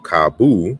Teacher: the final o is pronounced ooh in portuguese